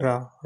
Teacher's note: तो जो व्यंजन वर्ण है उनका उच्चारण करते समय जीभ जो है मुख के मध्य यानी कि बीच में तेजी से लड़खड़ाती है या प्रकंपित होती है, तो उन्हें हम लुंठित व्यंजन कहते हैं।